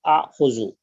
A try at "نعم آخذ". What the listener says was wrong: Don't need that A. نعم آخذ.